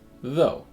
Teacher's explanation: makes a buzzing sound V and the vowel sound is O this is the back sound that moves up a little bit as you get from the beginning of the vowel to the end of it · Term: diff tongue